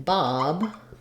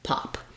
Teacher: So that's called a voiced sound. So voiced like in Bob versus voiceless like in pop.